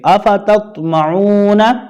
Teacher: تا اور تو کی آواز میں واضح فرق ہو، تا باریک اور تو کو پر پڑھیں گے